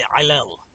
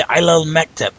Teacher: And the answer is that lam on Ila, that lam with that fatha, you carry that fatha sound past that aleph to the lam on the next word